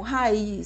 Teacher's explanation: o I não está funcionando como semivogal, ele está funcionando como vogal, já que ele possui acentuação tônica, portanto, ele tem que vir em uma sílaba diferente. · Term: hiato